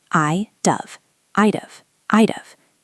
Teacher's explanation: In fluent English, we do not say I would have. We squash it. It sounds like I'd have.